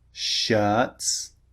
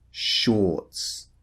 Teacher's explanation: Remember the first one, the mouth is relaxed. The second one, or, the mouth is rounded.